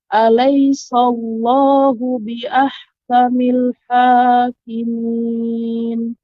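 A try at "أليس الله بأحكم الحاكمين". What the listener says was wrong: Ya, kemudian untuk catatan, alaisallah, jangan sampai sin menjadi tebal. Alaisallah, tidak. Akan tapi alaisallah, sa diucapkan secara sempurna. Alaisallah, baru masuk Allahnya tebal. Jangan sampai alaisal. Nah, itu jadi so. Jadi alaisallah.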